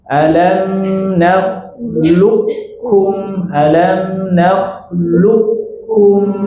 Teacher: Ada qof bertemu dengan kaf. Nah, ini kita idghamkan langsung ke kaf. KFnya dibuang, Bu.